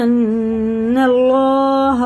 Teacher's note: अल्लाह का नाम ज़बर से पूरा है, मुँह भर के मोटा करके पढ़ेंगे